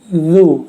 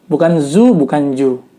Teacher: Jadi lidahnya dikeluarkan, ujung lidahnya sedikit dan diletakkan antara gigi atas dan gigi bawah. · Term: huruf zal